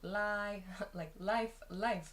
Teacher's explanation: The vowel pronunciation of the I sound is different. In life, it's a very open sound.